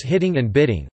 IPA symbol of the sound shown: ɾ